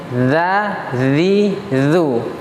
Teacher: huruf zal ini, ya cara mengeluarkannya adalah dengan mengeluarkan ujung lidah sedikit, za, zi, zu, sehingga dia bukan huruf z.